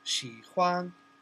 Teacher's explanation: That's third followed by the first tone.